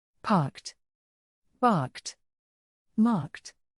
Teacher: if the Ed is preceded by a voiceless consonant such as K it should be pronounced as a voiceless t